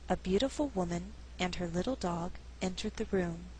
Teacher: Again, grammar is our guide, and we're dealing with a compound subject, meaning there's two. So it's possible to pause after woman and before dog and still sound natural.